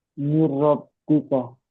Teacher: মিন মিন জের মিন, মিন, মিন মিন র কেন জের বলবেন? নুন বাদ চলে যাবে ভাই, রর সঙ্গে মিলিয়ে পড়তে হবে।